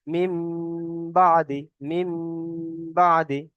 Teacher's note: নুন সাকিনকে মিমের দ্বারা পরিবর্তন করে এক আলিফ পরিমাণ গুণনা করে পড়তে হবে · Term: ইকলাব